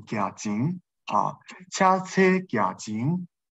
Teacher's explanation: 在第二音节，在这个后字，在后字的时候呢，它变成不送气